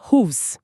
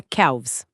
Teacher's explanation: Fica travado. Mas o V é sonoro, faz a garganta vibrar. É muito mais suave deslizar do V para o S.